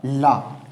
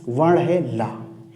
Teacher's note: ऐसा वर्ण जिसके उच्चारण में वायु जीवा के इधर उधर से भी थोड़ी अल्प रूप में निकल जाए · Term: पार्श्विक वर्ण